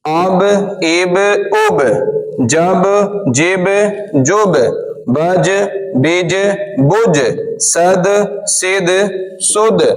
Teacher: ये 5 हुरूफ के ऊपर जब जब भी जज़म आएगा तो इनमें क़लक़ला होगा, यानी एक लौटती हुई आवाज पैदा होगी